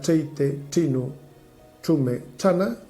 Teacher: Esta especie de che extraña, que é unha che pronunciada con la punta de la lengua, e al que se chama che vaqueira, moitas veces en moitos tratados, e la especialidade, la característica que singulariza estas falas de la esquina noroccidental.